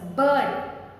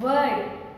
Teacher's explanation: R is silent. Though the R, letter R is there in the word, but the sound is not there. We don't sound R.